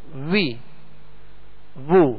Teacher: حرف کو جب نکلے گا تو ہونٹ گول رہیں گے، اور جب زبر پڑھیں گے تو آواز اور منہ کھول دیں گے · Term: واؤ